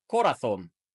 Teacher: don't mean he speaks Spanish I mean he's from Spain and in Spain they mostly use that th sound for their Z's and soft C's but not their s's